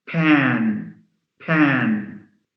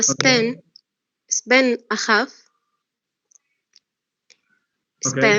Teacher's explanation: Yeah, you can feel a puff of air. That's when the p occurs at the beginning and is followed by a vowel.